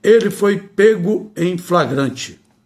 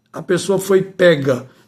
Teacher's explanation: pronúncia deve ter timbre fechado